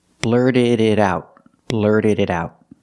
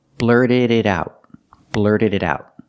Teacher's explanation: The T in blurted is a fast D. The D at the end of blurted is a fast D. The T in it is a fast D.